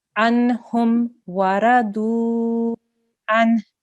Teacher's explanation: Radiyallahu anhu waradu an. Okay, so anhum, we're not going to hold on that noon sound